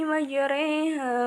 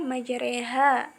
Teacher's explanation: Menurut bahasa, imalah berarti miring, dan adapun menurut istilah, imalah ialah memiringkan suara fathah ke arah kasroh atau suara alif ke ya. Cara membacanya seperti mengucapkan kata sate. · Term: imalah sugro